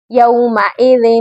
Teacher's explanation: چھپا کر پڑھنا ہے، ذال دو زیر ون، ون نہیں پڑھنا، نون کو ہم نے اظہار ظاہر کر کے نہیں پڑھنا بلکہ ون غنہ کی صورت پڑھنا ہے